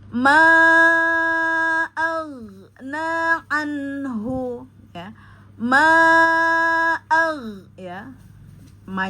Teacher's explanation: Nah, kemudian ada tanda ee madda ya, maka disebut dengan ada alif berdiri ya, maka disebut dengan mad jaiz munfasil ya, dibaca empat harakat